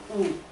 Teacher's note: 그러면 여러분이 발음 한번 해보면 이하고 우를 발음해보면 이, 우. 우를 발음하면 확실하게 우 하면 혀가 뒤로 딱 당겨지죠. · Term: 후설